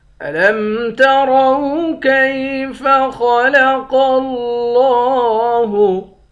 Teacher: را کو موٹا پڑھیں گے، خا اور قاف ان دونوں کو بھی موٹا پڑھیں گے